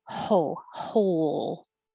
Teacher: we don't pronounce the W, so you just begin with the H